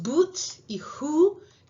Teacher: Y luego tenemos esta U, que es así como fancy, que es una U para put y foot. Pero luego tenemos boot y who, que está incluso más arriba y más atrás